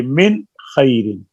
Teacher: نون کا مخرج زبان کی نوک ہے، خا کا مخرج حلق ہے، حلق کا اور محلہ ہے اور زبان کی نوک اور محلہ ہے، ان کے محلے ہی شہر ہی دور دور ہیں۔